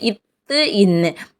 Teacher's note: மேல்வாய் பல்லினுடைய அடியை நாக்கின் நுனி பொருந்துவதனால் பிறக்கிறது